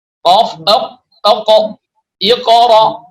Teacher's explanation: huruf qaf, ya, yang keluar dari pangkal lidah atas